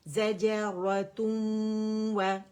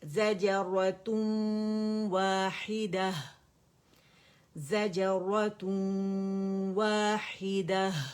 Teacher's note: تم و تو ناک بند کریں تو آپ کو غنہ سنائی دے گا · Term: ادغام ناقص بالغنہ